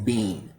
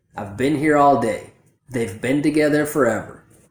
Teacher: So instead of bean, a native speaker will make the reduction and say bin. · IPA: / bən /